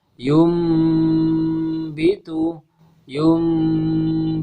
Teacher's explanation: suara nun sukun berubah menjadi huruf mim · Maka cara membacanya adalah suara nun sukun atau suara tanwinnya dirubah menjadi huruf mim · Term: iqlab